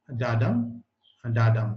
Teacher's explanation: So unstressed is stressed. No stress syllable followed by a stressed syllable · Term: iambic